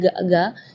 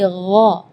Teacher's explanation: kalau ga itu dia makhrajnya dari lidah. Ya, tapi kalau huruf ghain itu dari bagian tenggorokan ya.